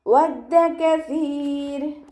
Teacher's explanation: വാവ് ഉച്ചരിക്കുമ്പോൾ ചുണ്ടുകളൊന്ന് വട്ടത്തിൽ പിടിച്ചിട്ട് ഉച്ചരിക്കാൻ ശ്രദ്ധിക്കുക. പല്ല് ചുണ്ടിൽ തട്ടാത്ത രൂപത്തിൽ വെക്കാൻ ശ്രദ്ധിക്കുക കേട്ടോ.